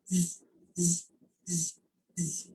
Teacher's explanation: You can feel your tongue touching the alveolar ridge